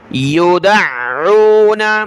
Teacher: عین کو سخت پڑھنا ہے، دال کو عین کے ساتھ ملائیں گے